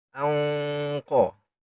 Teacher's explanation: Anqa dan sedikit ditebalkan karena huruf dasar qaf tebal.